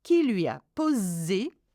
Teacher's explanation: here we've got vowel, vowel and one s, so it's a z sound